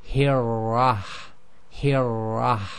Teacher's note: the tip of the tongue it will vibrate a very slight bit but what you cannot do is say and make that really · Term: vibrating